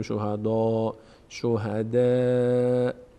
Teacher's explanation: دقت کنید که دال پرخونده نشه